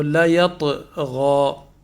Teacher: لیطغی، طا جو ہے نا یہ پر ہے، اور اس میں قلقلہ بھی ہو رہا ہے، چونکہ طا جو ہے قلقلہ کے حروف میں سے بھی ہے، تو لیطغی۔